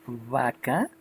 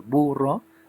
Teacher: Por eso esta se llama B labiodental, porque cuando la pronunciamos, cuando pronunciamos vaca, es la B pronunciada con la mordedura de los dientes con el labio inferior. Entonces los dientes que están en el maxilar superior muerden al labio inferior y en ese momento pronuncio el vaca.